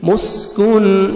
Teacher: سین کو اچھی طرح سیٹی کی آواز میں آئے گا